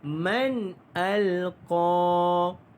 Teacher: alqa itu panjangkan dia 2 harakat kerana mad asli huruf alif